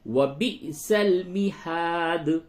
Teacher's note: با حمزہ زیر بی جھٹکے کے ساتھ